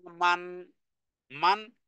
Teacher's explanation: নুন সাকিনের পরে হামজা এসেছে, গুন্না ব্যতীত পড়তে হবে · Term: এজহারের হুকুম